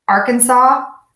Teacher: this word is spelled with an S, the true word Arkansas, but we do not pronounce that final S